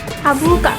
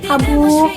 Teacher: Abuka karena dia berada di akhir kalimat itu biasa dibaca menjadi abuk gitu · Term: mat arid lisukun